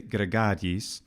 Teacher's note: Something that's really good and pretty consistent about what the actors do in the case of, say, gregariis, is they don't say gregariis. They don't put a glottal stop between the two letters I.